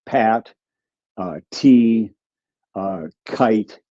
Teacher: there's a breath of air called aspiration that comes out